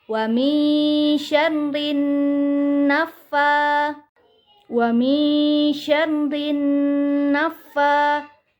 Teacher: huruf fa tidak termasuk ke dalam huruf gunnah. Jadi tidak boleh ditahan dan hanya boleh sedikit ditekan